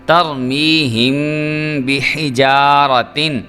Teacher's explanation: جو غنہ ہے میں نے اس لیے کیا کیونکہ آگے با آ رہا ہے اور یہاں پہ اخفاء شفوی ہوگا